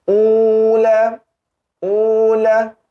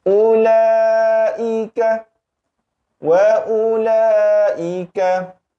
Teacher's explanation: kita tidak perlu dan tidak boleh memanjangkan sebutan ula